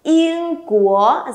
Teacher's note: Những bạn mà tự ngồi nhà bật video lên học á thì lão sư thấy rất là nhiều trường hợp sẽ đọc âm cái âm y dài này zin thì lưu ý giúp cô không phải là zin không có âm d nào ở đây cả